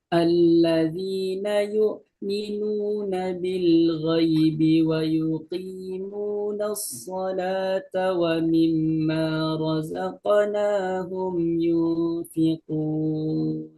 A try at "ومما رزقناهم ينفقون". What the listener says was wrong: Wa mimma lebih ditahan gunanya. minun ditahan ya.